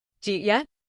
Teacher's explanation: The did and the you mix together to make a J sound.